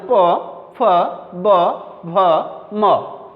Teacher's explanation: প বর্গীয় ধ্বনিসমূহ উচ্চারণের সময় ওষ্ঠ এবং অধরকে স্পর্শ করে, তাই এগুলোকে বলা হয় ওষ্ঠধ্বনি।